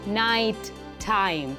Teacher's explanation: for this let's look at the words night time notice how the first word ends with a t and the second word begins with a T so we enunciate that end clearly